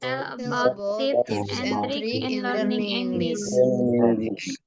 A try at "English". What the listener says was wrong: It's not English, but English. English. Nah, jadi G-nya tuh tetap dibaca English. English.